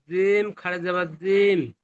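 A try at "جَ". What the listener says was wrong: জিম খাড়া জাবার যা। জিম খাড়া জাবার জিম হয় না, জিম খাড়া জাবার যা।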